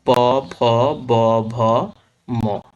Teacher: যেসব ব্যঞ্জন ধ্বনি উচ্চারণের সময় ঠোঁট দুটি কাছাকাছি এসে বায়ুপথে বাধা সৃষ্টি করে সেগুলো কি ওষ্ঠ ব্যঞ্জন।